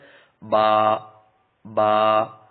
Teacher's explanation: دونوں ہونٹوں کے تر حصے سے ادا ہوتا ہے